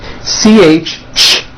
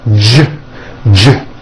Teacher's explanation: CH, ch, unvoiced, J voiced.